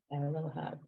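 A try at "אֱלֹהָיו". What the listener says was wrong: That's a vav at the end, and you'll see this ending a lot. Yud vav, and the yud just sort of gets lost. So it's Elohav, and you know what?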